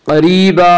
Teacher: इसका कायदा यह है कि अगर नून साकिन और तनवीन के बाद हुरूफ़ हल्की, हुरूफ़ यरमलून और बा के अलावा कोई और हर्फ आए तो वहाँ पे इख्फ़ाए हकीकी होगा। क़रीबा क़ाफ़ को पुर पढ़ेंगे। क़ाफ़ हुरूफ़ मुस्तालिया में से है। हुरूफ़ मुस्तालिया 7 हैं जिनका मजमुआ ख़ुस्सा ज़ग़्त नक़िज़ है, जो हमेशा हर हाल में पुर पढ़े जाते हैं।